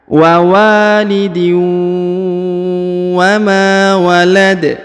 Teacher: ditahan, ditekan, lalu didengungkan 2 harokat